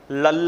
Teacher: ਸਾਡੀ ਜਿਹੜੀ ਜੀਭ ਸੀ ਤਾਲੂਏ ਦੇ ਨਾਲ ਮੁੜ ਕੇ ਲੱਗ ਗਈ, ਹਵਾ ਬਾਹਰ ਜਿਹੜੀ ਆ ਪਾਸੇ ਤੋਂ ਨਿਕਲ ਗਈ, ਤੇ ਜਿਹੜੀ ਜੀਭ ਆ ਗਈ ਉਸ ਦਾ ਉਚਾਰਨ ਅਖੀਰ ਦੇ ਵੇਲੇ ਉਹ ਪੁੱਠੀ ਹੋ ਕੇ ਡਿੱਗ ਪਈ, ਉਸ ਨੂੰ ਪਾਰਸ਼ਵਿਕ ਧੁਨੀ ਕਹਿ ਦਿੰਦੇ।